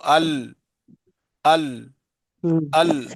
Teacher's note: ये मखरज नंबर 9, जबान की करवट के आखिर से नोक तक का हिस्सा, जबान की करवट के आखिर से नोक तक का हिस्सा जब ऊपर एक डाढ़ और दांतों के मसूड़ों से लगे उससे लाम अदा होता है